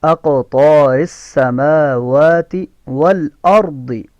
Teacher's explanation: سین میں سیٹی کی آواز ہے، میم کو اور واو کو کھینچ کر پڑھیں گے کیونکہ اس کے اوپر کھڑی زبر ہے. واو میں ہونٹ گول ہوں گے